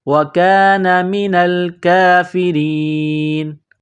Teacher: وَكَانَ مِنَ الْكَافِرِينَ۔ جب اس آیت پر رکیں گے، سٹاپ کریں گے، وقف کریں گے تو اس نون کو سائلنٹ کریں گے، وَكَانَ مِنَ الْكَافِرِينَ۔